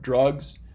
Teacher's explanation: In the South, they might say it with more of a schwa, like drugs versus drugs.